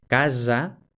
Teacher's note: intervocálica que hay que escribirla con 2 s es para diferenciar la ese simple intervocálica que representa la sonora